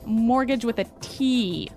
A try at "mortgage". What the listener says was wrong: Yeah, it has a T in it, but you don't pronounce it. You say mortgage. Mortgage. Not mortgage. Mortgage.